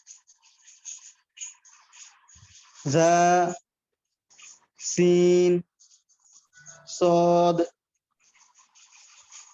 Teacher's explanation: জিহ্বার আগা সামনের নিচের দুই দাঁতের গোড়ার সাথে লাগিয়ে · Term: 12 নম্বর মাখরাজ